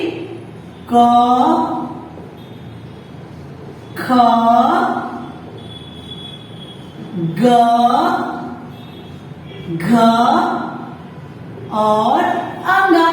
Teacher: ये क वर्ग के शब्द कंठ की मदद से बोले जाते हैं